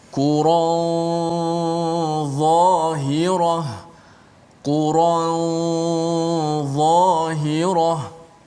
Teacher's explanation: ikhfa nun pada dha ini, dia bunyi dia ada tebal sedikit, bunyi tafkhim tebal pada gunnah